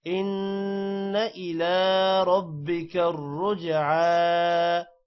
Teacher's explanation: ربک الرجعى را موٹا ہوگا اور رجعى را موٹا ہوگا جیم پر قلقلہ ہے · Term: کھڑی زبر